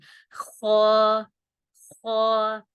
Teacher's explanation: اب یہ جو خو ہے یہ ایک تو موٹا پڑھا جاتا ہے، یعنی پور پڑھا جاتا ہے، اس کو پڑھتے ہوئے جو پور پڑھے جاتے ہیں، الفاظ موٹے پڑھے جاتے ہیں، ان کو پڑھتے ہوئے ہمارا منہ گول ہو جاتا ہے آٹومیٹکلی، اور اس کو پڑھتے ہوئے گلے میں تھوڑی سی خراش سی محسوس ہوتی ہے، یعنی یہ حلق کے اوپر والے حصے سے، جو حلق کا اوپر والا حصہ ہے وہاں سے ادا ہوتا ہے، ٹھیک ہے۔